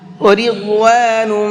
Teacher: ضاد کو پر کر کے پڑھیں گے اور نم کے اندر بھی غنہ کر کے پڑھیں گے۔